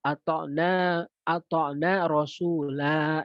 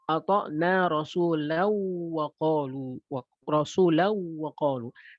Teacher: Ini menunjukkan bahwa alif di situ, la di situ hanya terbaca dalam keadaan wakaf. Ketika diwasolkan, maka dia menjadi hilang. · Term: sifar mustatil